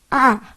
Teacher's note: começa mais aberto é a vogal mais aberta